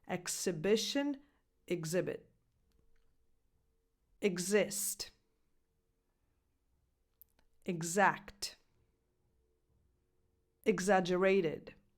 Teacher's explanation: the previous list has a [ks] sound but “exhibit” has a [gz] sound